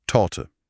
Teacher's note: das T formen wir mit der Zungenspitze direkt hinter den oberen Zähnen. Torte. Hart und präzise.